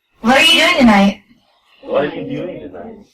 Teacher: so rising quite high, it's quite a high intonation. Goes up quite a lot.